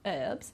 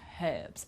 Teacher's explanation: Now the other one I've put US because in American English they don't pronounce the H, they say herbs, but in British English there we will pronounce the H